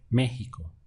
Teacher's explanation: now I'm stressing the front of the word